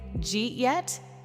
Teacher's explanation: >> [music] >> Imagine you hear this sentence, "Did you eat yet?" Many learners expect did {slash} you {slash} [music] eat {slash} yet, four separate words, but native speakers often say, "Jeet yet?" The sounds connect. Did you becomes didja. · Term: connected sounds